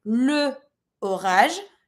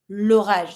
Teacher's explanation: You see that it's the specific the, but because l'orage starts with a vowel, I'm not going to say le orage, but I'm going to say l'orage. So I'm skipping my E from le to be able to link my word and be like kind of smooth